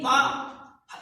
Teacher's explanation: अब पा को आप बिना होठ के मिलाए उच्चारण कर ही नहीं सकते। पा में जितने भी वर्ण आते हैं, इनको आप बिना किसी भी प्रकार के होठों को बिना मिलाए आप नहीं बोल सकते, इसीलिए इनका नाम होस्ट में आता है।